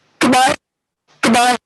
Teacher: You start high and drop quickly, and that's how you do a dismissive kind of goodbye · It has a very high start. If you look at the line in the middle row there, you can see it starts up very high in terms of pitch and drops very quickly. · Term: dismissive goodbye